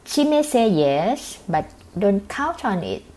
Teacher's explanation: this intonation describes how the voice falls and then rises. The fall rise intonation is used at the end of statement when you want to say that you are not sure or when you may have more to add.